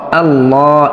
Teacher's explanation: আল্লাহ শব্দের লাম পড়বা মোটা করে পড়তে হবে কেননা তার পূর্বে জবর আছে